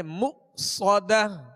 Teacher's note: یہاں حمزہ ساکن ہے، اس کو جھٹکے سے ادا کریں گے